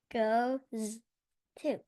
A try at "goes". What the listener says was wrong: Goes. Is that how I say it? Nope. How many? So here I see a suffix ES, but it doesn't add another syllable. Go. Goes.